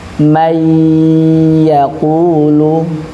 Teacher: kesalahannya nun sukun dibaca ee idgham tanpa ghunah. Idgham di sini artinya dimasukkan aja.